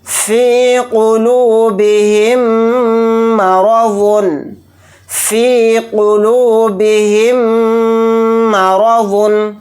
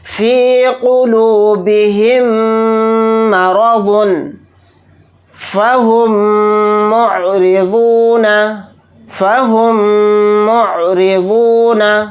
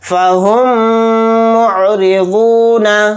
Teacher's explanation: میم ساکن کے بعد میم آ گیا تو میم کو میم سے ملا کر غنہ کے ساتھ پڑھیں گے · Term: ادغام شفوی